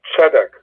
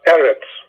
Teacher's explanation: last syllable when it comes to cigalette bounds they are accented the stress is in the first syllable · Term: accented on the first syllable